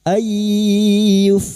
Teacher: Ay nun sukun bertemu ya idgham biguna masuk ke huruf ya dan mendengung selama 3 harokat